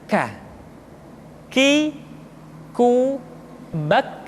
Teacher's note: Selanjutnya huruf k diucapkan dengan mengangkat pangkal lidah kita ke posisi di depan huruf qf. Ka diucapkan dengan mengalirkan nafas kita.